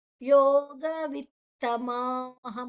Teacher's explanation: ಯೋಗ ವಿತ್ತಮಾಹ ಮಾದ ನಂತರ ಅನುಸ್ವಾರದ ಉಚ್ಚಾರಣೆ ಹ.